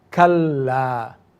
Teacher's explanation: So we have kal and then the lamb has to be pronounced a second time. But notice the lamb is lengthened with an alif. So we would say kala kal and then kala.